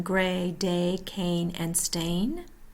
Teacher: Tongue mid-front, mouth tense, heard in gray, day, cane, and stain. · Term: long A